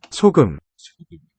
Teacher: Clearly aspirated initial S.